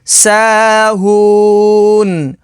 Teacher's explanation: وقف تام کی وجہ سے نون کو ساکن کر دیں گے تو حروف مدہ کے بعد عارضی سکون تو مد عارض ہوگی